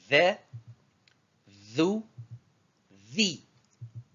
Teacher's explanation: se prononce au niveau de la pointe de la langue qui se positionne entre les incisives supérieures et inférieures en même temps